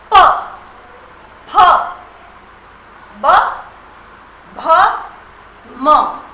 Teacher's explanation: जिनको बोलते समय आपके मुख से हवा बाहर निकलने से पहले आपके होठ बंद होते हैं और प्रेशर से बाहर निकलती है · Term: ओष्ठ वाला